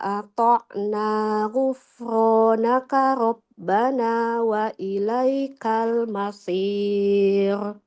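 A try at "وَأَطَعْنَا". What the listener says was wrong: Boleh diulang Ibu dikata wa ata'na huruf to kan huruf yang tebal ya.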